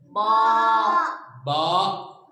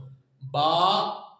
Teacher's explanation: दो होठा में मिला लिए, मिलाकर छोड़ना सो, छोड़ को आवाज करना सो।